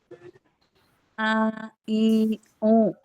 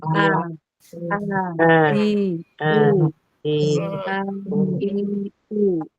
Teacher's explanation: Hamzah itu tidak nyambung ke hidung